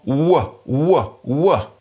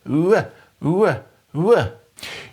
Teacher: When we make the sound w, often spelled w in English, we round our lips and let the air kind of get squeezed between them, but at the same time we raise our tongue, the back of our tongues, up towards the soft palate or velum.